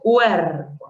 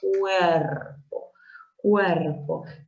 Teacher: la vocal cerrada U y la vocal abierta E forman parte de una misma sílaba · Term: diptongo